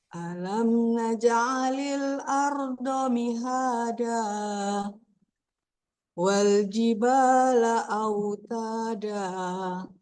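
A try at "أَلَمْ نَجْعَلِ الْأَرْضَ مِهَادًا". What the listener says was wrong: Nah, di ujungnya sedikit Bu. Sedikit ujungnya jangan sampai terlalu kepanjangan, sedikit saja. Alam naj'alil arda mihada. Sedikit aja coba.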